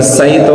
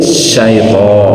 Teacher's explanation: Tafasi itu ada angin yang menyebar dalam mulut.